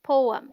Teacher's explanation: The PO sounds like po, as in go, and is this stressed syllable. And EM sounds like So the right pronunciation is poem.